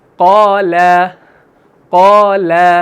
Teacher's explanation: تو آپ پہلے قا کو آ والی آواز نکال رہے ہیں موٹی، اور اس کے بعد لا کو جب پڑھتے ہیں تو آ والی آواز نکالتے ہیں۔